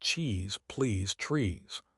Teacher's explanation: The vowel is long and tense. You have to smile to say it.